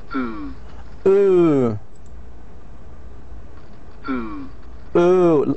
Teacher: See, the shape of the lips is rounded. The lips are rounded, and the center and back of the tongue is raised toward the soft palate. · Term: long vowel sound